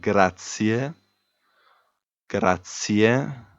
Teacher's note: So the stress falls on the middle A